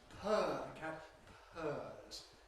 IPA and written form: pʰɜː (purr)